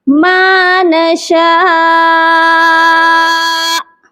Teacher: یہ نہیں کہ ما نشاء کہہ کے آپ چھوڑ دیں، نشاء حمزہ کو بالکل بھی پڑھیں ہی نہ، تو ایسے درست نہیں ہے، حمزہ کو ساکن کریں گے